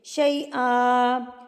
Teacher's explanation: وقف کرتے ہیں تو یہ ایک الف بن جاتی ہے. اس کو لمبا کر کے پڑھیں گے